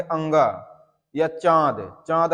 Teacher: जैसे आप बोलेंगे अंगा या चांद, चांद अगर आप बोल रहे हैं चांद, चांद बोलिए तो उसमें देखिए नाक पर भी जोर जा रहा है, तो ये आपका अनुनासिक व्यंजन हो जाएगा, ठीक है।